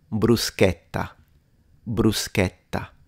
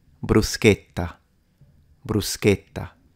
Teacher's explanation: Okay, so the difference was the way I pronounce the vowel e, because, or e in English, because it can be pronounced, if you want to speak standard Italian, then it's a closed e. E. But a lot of Italians, depending on which region you're in, will pronounce it with an open e. And it becomes, so both are acceptable.